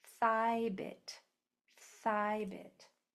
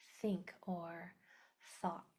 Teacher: on that first sound, my tongue is going between my teeth and I'm blowing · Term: th sound